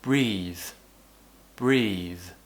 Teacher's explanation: what tends to happen is they sound a little bit different a voiced consonant at the end of a word will be slightly unvoiced it just means that we don't use the voice as much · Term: voice th sound